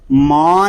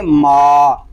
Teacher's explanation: ناک میں آواز نہیں جانی چاہیے